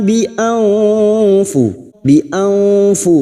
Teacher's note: m thabiii illa bianfu bianfu nun sukun bertemu Fa ikhfa Hakiki kita semarkan bunyi nun sukun dan mendengung selama tiga harakat siap-siap pada saat mendengung menyamarkan bunyi nun sukun kita siap-siap membunyikan